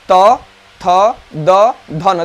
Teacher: हमारा जीभ बाहर निकलेगा, जाकर दंत को स्पर्श करके आएगा।